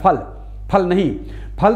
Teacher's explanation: फल तो शुद्धतम रूप में हमारे होठों को जोड़ने से निकलेगा